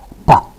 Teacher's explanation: A plosive like p in pa has a burst of energy pa at the release of the closure, which can be seen as a spike in amplitude on a sound wave.